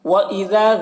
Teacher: ذال کو باریک پڑھنا ہے، اور یہاں پر الف مدہ ہے، اسے ایک الف کے برابر کھینچ کر پڑھیں گے